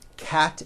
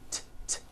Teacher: Cat ends with an unvoiced T.